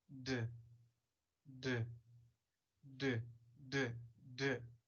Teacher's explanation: When we say d, d, there is vibration, and we have a voiced sound.